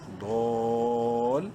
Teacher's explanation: قبلی ہی، من قبلی ہی، لام زبر لا، میم زیر می، لمی نون ضاد زبر نو، الف لام سائلنٹ، لمی نت، ضاد الف لام مد زبر ضال. 5 الف کے برابر لمبا کریں گے ضاد کو لام سے ملاتے وقت